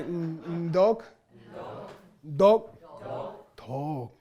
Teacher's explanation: this is a real English D with an n Sound in front of it